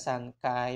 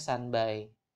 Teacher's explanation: n dibentuk di dental sedangkan B dibentuk di bilabial di bibir